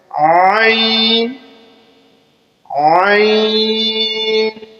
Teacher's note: حلق سے جو ہے ہم اس کو پڑھیں گے تھوڑا سا زور لگا کر، موٹا حروف ہے اسے موٹا کر کے ہم نے پڑھنا ہے عین عین۔